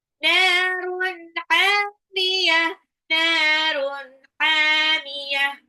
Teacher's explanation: H-nya tipis ya, tenggorokan tengah. H-nya juga mad tabi'i. · Narun nunnya 2 harokat mad tabi'i. Narun tanwin ketemu ha izhar jelas hamiyah